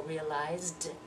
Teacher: That z is voiced, so realized.